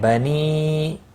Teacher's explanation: مد منفصل ہے، 3 الف کے برابر کھینچ کر پڑھیں گے۔